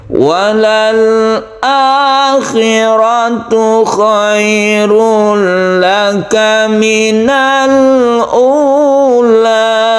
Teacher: Misalnya yang tinggi walal akhiratu, kemudian direndahkan di minal ula.